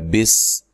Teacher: سین کو باریک سیٹی سے بغیر ہلائے